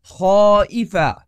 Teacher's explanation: یہاں ہم الف کو آ کی طرح ادا کرتے ہیں کیونکہ اس سے پہلے خا آیا ہے جو موٹا حرف ہے، اسی لیے ہم کہیں گے خائفا نہ کہ خائفا۔